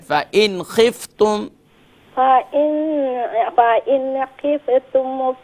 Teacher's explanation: Don't do क़लक़ला on the फ़ा और नून पर भी कंट्रोल करें।